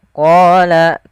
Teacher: qo kita panjangkan sebanyak dua harakat karena Dia ada bacaan mad thabi'i yaitu ditandai dengan adanya fathah · Pada lafal bacaan qala, ini tebalkan huruf qafnya. Dari mana makhraj daripada huruf qaf, yaitu pangkal lidah kita menempel dengan langit-langit atas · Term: mad tabi'i